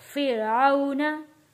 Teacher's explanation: वाव साकिन है, वाव साकिन से पहले जबर है, यहाँ हम पढ़ेंगे आउ। फिरऔन हरूफे लीन है इसलिए हमने यहाँ इसको खींच कर नहीं पढ़ा।